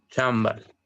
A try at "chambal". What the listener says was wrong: Un poco más largo.